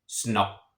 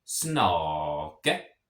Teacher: So that means that A is a short vowel. So I'm going to have kind of a slight pause right between the two K's.